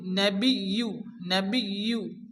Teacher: এখানে ইয়ার উপরে তাসদিদ, ইয়াকে দুবার উচ্চারণ করতে হবে।